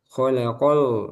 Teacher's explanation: Lamnya tipiskan. Khalaqal gitu ya bunyinya. Al bukan o. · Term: Lam tipis